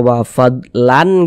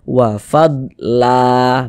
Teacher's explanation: Mad Iwat itu panjangnya dua harakat · Mad iwad itu panjangnya 2 harokat, sehingga bunyi tanwinnya yang seharusnya kita baca wa fadlan gitu kan, nah, ditukar menjadi fathah, dibaca wa fadla, begitu. Panjangnya 2 harokat.